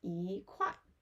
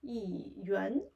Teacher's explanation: Here 块, which is a falling tone. 元 is a rising tone. 元 is a formal way, and 块 is informal way.